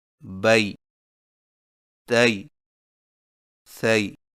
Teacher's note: یائے لین میں ہونٹوں کو اوپر کی طرف کھولنے کے فوراً بعد نیچے کی طرف جھکا کر نرمی سے بغیر کھینچے پڑھیں